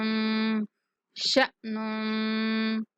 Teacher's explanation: حمزہ ساکن ہے اس لیے جھٹکے کے ساتھ ادا کریں گے